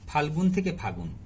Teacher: শব্দের মধ্যে থাকা লটা লুপ্ত হয়ে গেছে, ল একটা ব্যঞ্জন ধ্বনি এখানে নেই আর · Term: মধ্য ব্যঞ্জন লোপ